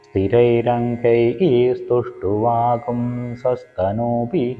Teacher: അനുസ്വാരത്തിൻ്റെ പരമായിട്ട് സ വരുമ്പോൾ ഗും എന്നുള്ളൊരു ഉച്ചാരണമായിരിക്കും അവിടെ വരിക.